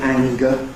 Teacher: And in ‘anger’ [ˈæŋgə], the [g] has a ‘nasal approach’.